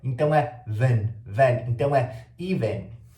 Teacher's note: Você vê que tem dois es, mas esses dois es vão ser pronunciados de formas diferentes. Então o primeiro tem som de i, e o segundo a gente vai juntar com o V e o N e vai fazer um som de então é ven. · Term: schwa